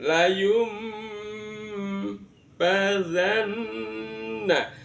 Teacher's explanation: bunyi n atau bunyi nunnya dibaca menjadi mim, seolah berbunyi mim. Layum namanya bacaan iqlab, merubah bunyi nun menjadi bunyi mim.